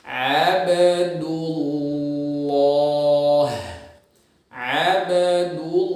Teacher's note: Abdul, si lam kayak tadi berbarengan antara ujung lidah dengan pangkal lidahnya bareng. Ujung lidahnya nempel ke gusi, pangkal lidah nempel ke langit-langit. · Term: tebal